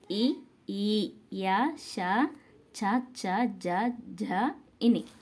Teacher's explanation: దవడ నుండి పుట్టి పలుకబడు వర్ణాలు తాళవ్యాలు